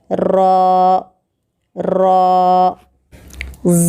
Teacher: زبان کی نوک کی پیٹھ کو اوپر کے دانتوں کی مسوڑوں کو لگانے سے را نکلتا ہے